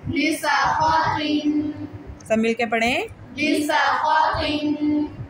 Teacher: सीन की अदायगी में सीटी की आवाज़ निकले, नीज़ ख़ौ और क़ौ को मोटा पढ़ा जाए। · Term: सीन की सीटी